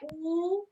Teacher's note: फिर ओठ से क्या होते हैं, ओठ से ऊ, जब हम ऊ बोलते हैं तो हमारा ओठ जो है गोल हो जाता है